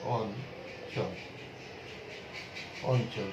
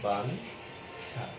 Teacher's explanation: 4টি বর্ণের পূর্বে যুক্ত ইও এর উচ্চারণ ন হবে